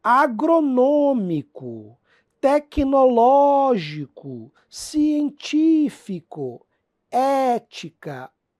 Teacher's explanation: é proparoxítona tônica na antepenúltima